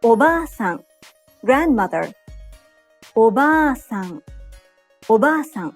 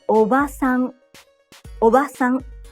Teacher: Japanese learners often shorten the long vowel in ba and say oba-san, meaning aunt, not grandmother. In this case, not only is the pronunciation incorrect, but by shortening the vowel, you change the meaning of the word.